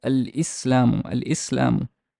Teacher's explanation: It's like it does not go away. The lam is still there, and the letter is not geminated as the hamza is not doubled. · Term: moon letter